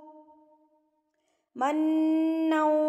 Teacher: نون کے اوپر تشدید ہے تو یہاں پر آپ نے غنہ کرنا ہے